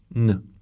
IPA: n